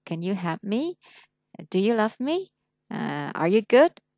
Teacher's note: Còn chỉ có câu hỏi yes no thì mình lên giọng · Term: intonation